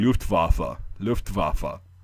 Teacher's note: the W in German does not make a W sound like it does in English, the W, you know, water or whatever. It makes a V sound. · pronounce the W as a V and not a W like we say it